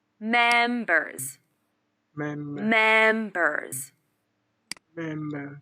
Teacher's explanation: the stress is on the first syllable, and remember to use the final z sound.